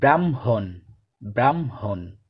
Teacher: বাংলা উচ্চারণের সময় হয় ময়ের পরিবর্তে বর্ণ বিপর্যয় ঘটে ময় হয় উচ্চারিত হয়, অর্থাৎ আগে পরে স্থান পরিবর্তন হয়ে যায়।